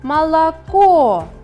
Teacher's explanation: Ударение падает на третий слог.